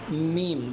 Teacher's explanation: میم دونوں ہونٹوں کو ملانے سے میم ادا ہوتا ہے